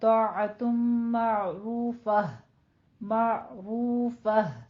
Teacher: تائی مربوطہ، اس پر آپ نے اگر وقف کرنا ہے تو پھر ہا کی آواز میں بدل دیں گے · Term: وقف ابدال